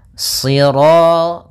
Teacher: Karena shad itu pangkal lidah kita terangkat dan melekat karena dia huruf idbaq siro. Kemudian rnya ro tafkhim.